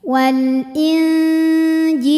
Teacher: tingkatan dengung ausat ikhfa ausat sebab nun sukun menghadapi huruf Jim maka bunyi Nun samar-samar siap-siap menuju makhraj huruf Jim yaitu Tengah lidah ya Mau siap-siap menyentuh langit-langit tengah ya disertai dengung Wal Injil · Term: ikhfa Hakiki, ikhfa hakiki